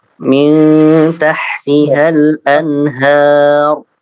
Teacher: har tebal dibaca tebal